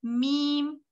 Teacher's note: ये जो होठ के बाहर की तरफ का जो ये खुश्की वाला हिस्सा होता है, इससे मीम अदा होता है, मीम। ठीक है, इसमें भी बिल्कुल एफर्ट नहीं लगती, सबका ठीक होता है।